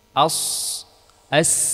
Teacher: ini juga sudah kita jelaskan tadi bahwa safir itu dia adalah tajam tajamnya suara disebabkan suara tadi mengalir dari aliran yang sempit yaitu antara dua gigi seri